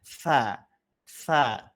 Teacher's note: Telapak tangannya taruh depan mulut lafalkan tsa. Tsa harusnya ada hentakan udara keluar baru itu betul. Kalau belum ada udara yang terasa pada telapak tangan berarti sifatnya masih belum keluar itu ya. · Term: hames